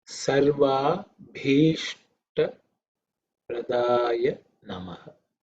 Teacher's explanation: this bha is the fourth letter in the pa varga, so it's aspirated, extra air, and ish and ta.